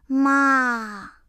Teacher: The third tone starts low, dips down, and then goes up. It's like a small bounce in your voice.